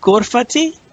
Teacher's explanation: if you say Ghurfati with the long E sound, you're saying my room. You see, Ghurfati, but it's Ghurfati, meaning it's just a short I sound, Ghurfati.